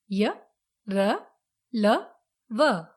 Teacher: इनका उच्चारण मुख के भीतर की ओर कंठ से होता है, इसलिए ये अंतस्थ व्यंजन कहलाते हैं। इन्हें अर्ध स्वर भी कहा जाता है।